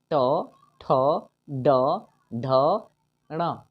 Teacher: जब ये हम ट बोलते हैं तो हमारा जुबान मूर्धा में टच करता है, इसलिए इन्हें हम मूर्धन्य वर्ण कहते हैं।